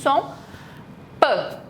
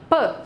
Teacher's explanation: A gente tem o toque ali dos dois lábios, ela é oclusiva